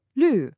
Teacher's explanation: The first syllable, L, is a fourth tone. That's that sharp falling sound, L. Then, the second syllable, sh is the first tone we just practiced, high and flat.